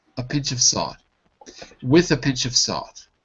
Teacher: Notice I don't say a pinch of salt, but I say a pinch of. I don't say the O in of, and I don't really say the A in the article a. I say a and of. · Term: weak form